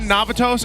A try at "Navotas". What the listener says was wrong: you slipped on Navotas. You said Navatos. It's Navotas. Navo. It's like Nabutas, but Navotas.